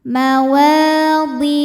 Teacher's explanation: maka Ha damir ini kita panjangkan dua harakat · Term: mad Silah qasirah